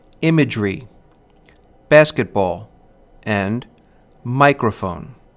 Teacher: a stressed syllable followed by two unstressed syllables dum da da can be heard in words such as imagery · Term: dactyl